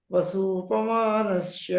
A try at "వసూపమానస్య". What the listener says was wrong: సకారంలో షకారం వస్తుంది. సకార స్థానంలో షకారం వాడుతున్నారు. ఉపమానస్య శ్యలాగా వస్తుంది. మీరు అంటే దక్షిణానికి భిన్నంగా ఉన్నారు. ఉత్తర భారతం వాడు చదువుతారు కదా, క్యాష్ హాబ్ అని చెప్పినట్టే వస్తుంది. సాహబ్ షాబ్